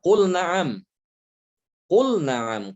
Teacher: Lamnya dibaca idhar, tidak boleh diidghamkan kepada nun